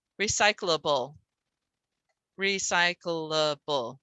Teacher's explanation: I haven't seen one that disagrees that the CL is a syllable by itself without a vowel.